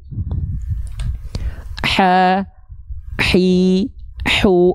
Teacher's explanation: hak kecil ini dilafalkan dari bagian tengah tenggorokan, dari bagian katup epiglotis, karakter nafasnya berbisik. Ha, hi, hu, berbisik dia.